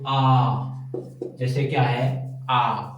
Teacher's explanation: उच्चारण में मुह पूर्णतः खुल जाता है विवृत में क्या है वे स्वर जिनके उच्चारण में मुह पूर्णत खुल जाता है